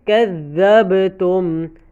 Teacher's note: با کو ہلانا ہے کیونکہ با حروف قلقلہ ہے